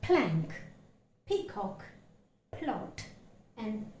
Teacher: See the additional breath force with which the sound p is pronounced